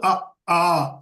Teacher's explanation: ஆ என்று சொல்கின்ற போது இந்த கழுத்து அதிர்வதை நாம் பார்க்கலாம்